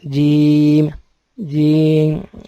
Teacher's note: زبان کا جو بیچ کا حصہ ہے جس کو وسط لسان کہتے ہیں، بیچ کا حصہ یہ اوپر تالو پہ لگتا ہے۔ اوپر کا جو حصہ ہے، جو لال دانتوں سے پیچھے والا جو حصہ ہے، جو اوپر جگہ ہے لال رنگ کی، وہاں جا کے یہ زبان لگتی ہے جیم جیم، اور یہ حرف نکلتا ہے۔